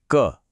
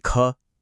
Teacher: जिसमें कम हवा निकले वह अल्पप्राण और जिसमें ज्यादा हवा निकले वह महाप्राण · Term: प्राणत्व